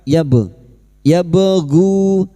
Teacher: Ba sukun yang mati asli di tengah kalimat qalqalah sugro. Wabgu jangan lupa dipantulkan